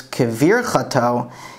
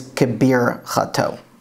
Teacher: the vet here, without a dagesh, is uniquely pronounced as a b. So even though in modern Hebrew it's kevir chato, here it is kebir chato.